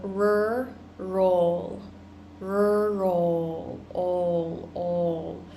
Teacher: So we're making this ol sound by pulling our tongue back.